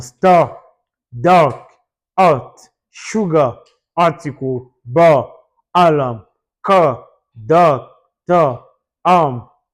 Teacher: une voyelle et R à la fin d'un mot, le R n'est pas prononcé, c'est absorbé. C'est-à-dire il y a un R.